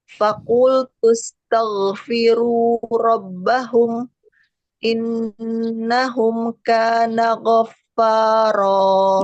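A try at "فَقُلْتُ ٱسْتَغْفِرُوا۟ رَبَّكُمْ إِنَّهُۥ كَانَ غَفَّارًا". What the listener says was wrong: Faqultu astaghfiru rabbakum, bukan rabbahum. Rabbakum innahu, bukan innahum.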